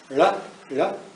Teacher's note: sometimes I hear a lateral flap